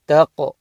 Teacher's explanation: Taq. Bounce on the qaf because it's a qalqala letter. Taq. And the ha joins the ra with the fatha.